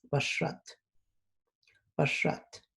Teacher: remember that you're gonna hear a little bit like a whistling with the X sound